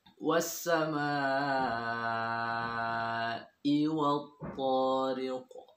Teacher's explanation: Qaf ini tempat keluarnya adalah di pangkal lidah, sehingga mudah untuk dikeluarkan qalqalahnya, bukan di tenggorokan. Kesalahan yang sering kita dengarkan dan kita temui dari cara membacanya, qaf ini dikeluarkan dari tenggorokan, tariq.